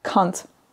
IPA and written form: kʌnt (can't)